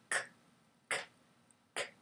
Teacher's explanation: I can feel the throat moving, but it's not vibrating. So the voice is not on. So we know the sound is k.